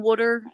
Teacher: T's are pronounced as D's. That's our thing.